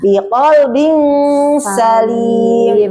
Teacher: ketika huruf tanwin itu didengungin langsung masuk sin gitu